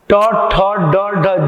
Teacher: ट ठ ड ढ, जीव को पलट के बोला जा रहा है। ट ठ ड ढ अ, एक ही स्थान से बोला जा रहा है, तो यह मूर्धा है।